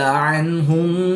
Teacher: نون ساکن کے بعد ہا حروف حلقی میں سے ہے تو یہاں پر اظہار ہوگا، غنہ نہیں کریں گے